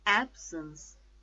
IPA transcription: ˈabs(ə)ns